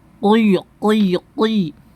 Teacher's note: Dia saking tebalnya, dia terlalu berlebihan di dalam menebalkan huruf qaf. Seakan-akan lidah itu ya menempel. Lidah menempel ke langit-langit. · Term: Itbaq pada huruf qaf